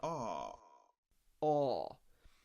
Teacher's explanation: the other Corner down here we get this sound a a this is an open Sound where the tongue is very low and the sound is coming from the back of the tongue